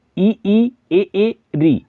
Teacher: अग्र स्वर में ई ए री, जो जीभ के आगे के भाग से बोले जाते हैं